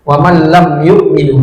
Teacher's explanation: Jadi jelas mim sukunnya, jangan lama. Waman lam yukminu cepat. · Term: izhar syafawi